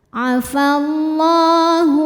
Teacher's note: sebab lam berharakat fathah berdiri cara bacanya lam dipanjangkan dua harakat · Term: Mad Thobi'i muqaddar